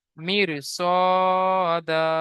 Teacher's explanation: র সাকিনের আগে জের এসেছে, র বারিক হওয়ার কথা ছিল, হুরুফে মুস্তালিয়া আসার কারণে রকে পুর করে পড়তে হবে।